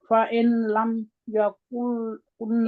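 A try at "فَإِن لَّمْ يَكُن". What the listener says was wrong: नहीं होता, इस नून को नहीं बुलाना, डिलीट कर देना है बीच में से।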